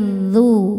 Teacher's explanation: ujung lidahnya sentuh sama ujung gigi seri atas Terus kita monyong karena harakatnya domah duu d bukan Zu tapi